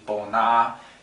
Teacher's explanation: So here we see ba and I've used the IPA system illustrate this by adding a colon mark at the very end. So this is actually a long flat tone.